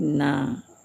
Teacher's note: Nun menjadi na. Ada ke hidungnya sedikit.